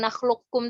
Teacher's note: Jadi yang huruf pertama itu udah benar-benar hilang sifat dan makhrajnya itu, zatnya itu udah hilang. Jadi benar-benar dimasukkan huruf qaf ke kafnya secara sempurna, dan sifat qafnya yang isti'la dan qalqalahnya ini benar-benar dihilangkan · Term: idgham kamil